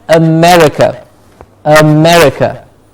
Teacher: America, not a-me. So the jaw is closer.